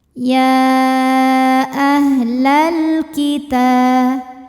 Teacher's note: Sebab ada alif lam yang menghadapi huruf qamariyah yaitu kaf. Maka lam sukun dibunyikan dengan jelas atau disebut dengan idhar qamari.